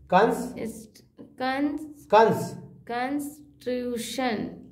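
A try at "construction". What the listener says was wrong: ट्यूशन है, सी को नहीं पढ़िएगा।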